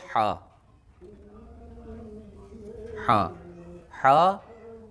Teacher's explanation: हा, हा हल्की है, हल्की हरूफ में से है, यानी ये जो हा है बड़ी हा बिल्कुल हल्क से निकलती है, हल्क से। मसलन जिस तरह हमारे हल्क में कोई चीज़ फंस जाती है तो फिर हम उसे निकालने के लिए बिल्कुल यही आवाज़ हा की आवाज़ है, इससे कम पर कोई गुंजाइश नहीं है।